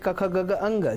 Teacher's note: ક વર્ગ એટલે ક ખ ગગ અંગ જે કંઠમાંથી નિષ્પત્ત થાય છે